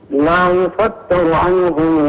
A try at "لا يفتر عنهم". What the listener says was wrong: لا تفخم اللام لا تفخم اللام لا تقل لا يفتر إنما لا يفتر عنهم